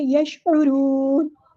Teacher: یشعرون، عین کو ہم مستعلق سے ادا کریں گے اور را پورا ادا کریں گے، موٹا ادا کریں گے. اور ہم وقف کرتے ہوئے نون کو ساکن کر دیں گے اور یہاں پہ مد عارض ہوگی.